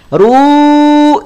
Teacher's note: saat kita mengucapkan ru jangan sampai disengaukan jangan sampai didengungkan